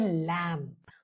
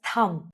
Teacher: Now let's talk about a silent B. Now B goes quiet when it follows M at the end of a word.